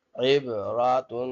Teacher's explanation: عین با عیب را زبر را عیب را تا دو پیش تن عیب راتن تنوین ہے اسی وجہ سے ہم ناک میں آواز پیدا کر رہے ہیں. عیب راتن وقفا عیب راہ تا جو ہے ہاں میں بدل جائے گی وقفا میں.